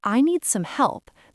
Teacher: The D at the end of need is often very light, almost silent, especially before some. and some help can sound like some help.